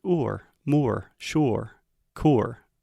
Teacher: these are what I call R colored sounds because the quality of the sound is colored it changes a little bit depending on how we use the